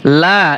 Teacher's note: জবর লা এখানে তিন আলিফ টান দিতে হবে